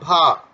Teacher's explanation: स्पर्श घोष महाप्राण ओष्ठ व्यंजन ध्वनि है